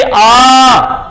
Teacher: आ तो जीभ के पिछले हिस्से से आवाज निकल रही है। आवाज तो मुंह से निकल रही है लेकिन जोर जो पड़ रहा है जीभ पर वो पिछले हिस्से पर दबाव पड़ रहा, तो इसलिए पक्ष स्वर।